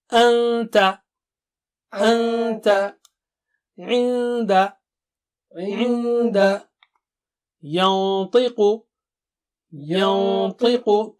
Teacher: Ta is very thick and high, so Noon Sakina will be also high.